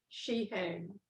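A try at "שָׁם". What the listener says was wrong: She. Aim. Aim. Not hey. It's a A. Just A. You don't even hear that iron. It's just the A. Aim.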